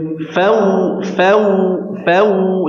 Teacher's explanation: Wa idh ditahan dulu, dzalnya dialirkan dengan sempurna. Ya, terus ada huruf wawu sukun ya. Maka ini disempurnakan dengan memajukan kedua bibir